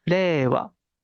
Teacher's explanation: la i pareciera que no está sonando no pareciera que es la e que se estira